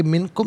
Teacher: इसे इन मिनकुम नहीं पढ़ेंगे, इम मिनकुम, मिन अलहदा कुम अलहदा मिलाकर पढ़ेंगे। मिनकुम नून साकिन के बाद काफ हरफ इख्फा है तो नून साकिन को इख्फा के साथ पढ़ेंगे। नाक में आवाज़ ले जाकर गुनगुनाना, इसे इख्फा कहते हैं।